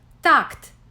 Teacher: These are dental sounds without aspiration, articulated with the front of the tongue pressed against the upper teeth